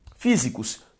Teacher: Físicos também tem como sílaba tônica a antepenúltima, logo uma palavra proparoxítona.